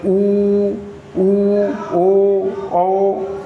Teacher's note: होंठ की आकृति पुरी गोल हो जाति है वृत्त बंटी है तो उसे व्रत मुख कहते हैं जैसे यू यू यू यू